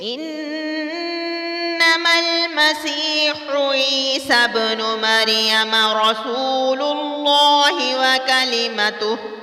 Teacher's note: رسول اللہ باریک نہیں پڑھنا بلکہ پر پڑھنا ہے